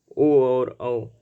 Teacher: ओ और औ, ये आपके कंठ और ओष्ठ से मिलकर निकलने वाले वर्ड हैं, इसलिए इनका उच्चारण स्थान कंठ और ओष्ठ माना जाता है।